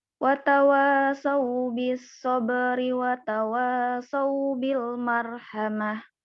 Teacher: Watawanya jangan kepanjangan. Cukup 2 harokat.